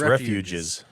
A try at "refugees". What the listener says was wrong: But then when you say refuges, it sounds like you're saying refuses. Anyway, so refugees,